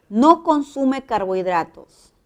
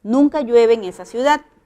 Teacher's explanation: Es una negación, el tono baja.